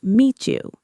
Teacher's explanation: If I say the sentence, "It's nice to meet you," on paper, meet ends with a T and you starts with a Y. But when people say this at a natural speed, they often make a ch sound at the end of meet and the beginning of you